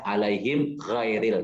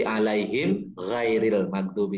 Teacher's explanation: Jadi himnya jelas, mimnya kedengaran him, kemudian gha-nya udah beda lagi gitu. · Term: idhar safawi